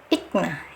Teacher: Ik ditahan dulu, ik, jangan ada angin yang keluar dulu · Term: sifat syiddah